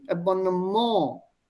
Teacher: The stress is before M. Here, the small apostrophe here.